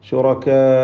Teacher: ശുറകാ റാഇന് തഫ്ഖീമാണ്. ശുറകാ ഇതിലുള്ള ദീർഘം മദ് മുത്തസിൽ വാജിബാണ്, നിർബന്ധമായും 4-5 ഹറക്കത്തിൻ്റെ അളവിൽ ദീർഘിപ്പിക്കേണ്ട മദ്ദാണ്. വഖഫ് ചെയ്യുമ്പോൾ 6 ഹറക്കത്തിൻ്റെ അളവിൽ വരെ ഇഷ്ബാഉം ആകാവുന്നതാണ്.